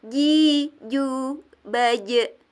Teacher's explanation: Jadi itu tidak, bukan nj, nj. Tidak ada n-nya, bukan nj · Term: jim